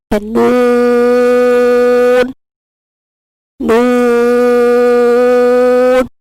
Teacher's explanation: نون کو ادا کرتے ہوئے ناک میں آواز نہیں لے کے جائیں گے